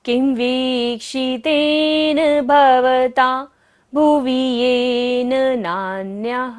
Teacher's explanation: क के ऊपर बिंदी और बाद में क्या है व, य र ल व होता है, बिंदी का उच्चारण क्या होगा म